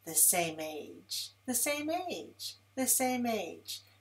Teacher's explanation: Take that M and move it over to the next word. · To link the words together, feel the vibration in the lips. Continue from the vowel in one word through the M, through the vowel of the second word.